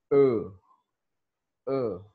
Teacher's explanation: Baris mati ni dia duduk antara buka dengan muncung.